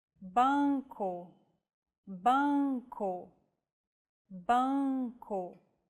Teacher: you should relax your soft palate and the back of your tongue so the nasal passage is not blocked. It's like humming with your mouth open and adding the vowel sound to it. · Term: Nasal vowels